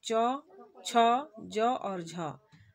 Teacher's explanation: ऐसे व्यंजन जिनका उच्चारण करते समय क्या हो कि मुखा द्वारा स्पर्श भी होता है और हवा को बाहर निकलने में संघर्ष का सामना करना पड़ता है ऐसे व्यंजन स्पर्श संघर्षी व्यंजन कहलाते हैं और यह स्पर्श संघर्षी